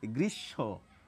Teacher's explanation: শব্দের মাঝে বা শেষে যদি ম ফলা থাকে যার সঙ্গে যুক্ত থাকে সেই বর্ণটির দীপ্ত অর্থাৎ ডবল উচ্চারণ করি। তবে বাচিক শিল্পী যারা তারা কিন্তু অনেকেই এখানে একটি চন্দ্রবিন্দু নিয়ে আসেন উচ্চারণে · বাংলা যে উচ্চারণ রীতি সেখানে ম ফলা যদি শব্দের শেষে বা মাঝে থাকে ম এর উচ্চারণ আমরা করি না